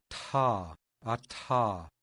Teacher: Listen for the breathiness, the ta.